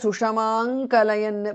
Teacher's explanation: because of sandhi anuswara changes to nga there